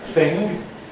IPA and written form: θɪŋg (thing)